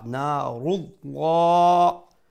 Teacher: the lam of the word of Allah will be pronounced with a fuller sound, with a full mouth, due to the haraka prior to it is a upward haraka, meaning fatha or a dhamma, which is on top of the ra.